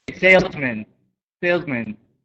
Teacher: i'm putting the emphasis here on sales